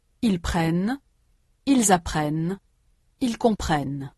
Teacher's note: Il y a dans les trois personnes du pluriel une consonne ne qui est absente des trois personnes du singulier.